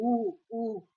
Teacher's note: होठों क्या है वृत्ताकार होठ की आकृति बन जाती है